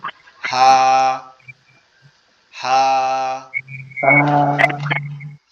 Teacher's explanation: আমাদের এই যে কণ্ঠনালীর যে শুরু, অর্থাৎ এই গলার এখান থেকে আওয়াজটা আসবে